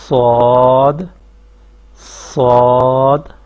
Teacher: جب آپ صاد ادا کریں گے تو زبان آگے سے بھی اوپر اٹھے گی یہاں سے، اور پیچھے سے بھی زبان اوپر کی طرف اٹھے گی اور درمیان سے نیچے ہی رہے گی۔ صاد صاد، مخرج ان تینوں حروف کا ایک ہی ہے، زبان کی نوک جب سامنے والے نیچے والے دو دانتوں ثنایا سفلا پر لگے گی تو صاد، زا اور سین، یہ تین حروف ادا ہوتے ہیں۔